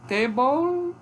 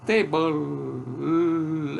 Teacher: O nome de mesa em inglês, table, tem como núcleo, a última sílaba tem como núcleo de sílaba um lê, uma lateral. Table é o lê, que é o núcleo da sílaba final.